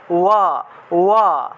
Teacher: কিন্তু যখন আমরা অন্তস্থ ব উচ্চারণ করব তখন দুইটা ঠোঁট না লাগিয়ে ব উচ্চারণ করতে হবে। অর্থাৎ আপনি যখন ঠোঁট না লাগিয়ে ব উচ্চারণ করেন তখন উচ্চারণটা কিন্তু এই রকম আসে, ওয়া, ওয়া, এইভাবে।